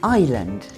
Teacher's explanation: And the other thing is the ‘s’. It’s a silent letter. · The first vowel sound isn’t eee. It’s eye.